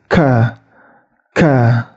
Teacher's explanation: huruf Kaf yaitu ketika Tengah lidahnya itu diangkat mengenai langit-langit